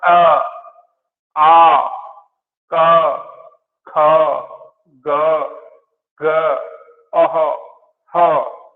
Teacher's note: ये जो ध्वनि है ये हमारी सीधी सीधी कंठ से प्रभावित हो रही है, इसलिए इनको कंठ बताया है, कंठ्य वर्ण बताए हैं।